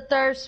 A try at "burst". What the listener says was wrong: Burst. Burst with a B.